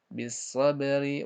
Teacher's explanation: Di situ ro-nya ro kasrah berarti dibaca tipis. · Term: hukum ro